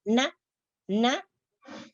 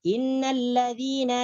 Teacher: langit-langit lembut diturunkan dan udara keluar melalui mulut dan hidung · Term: huruf nun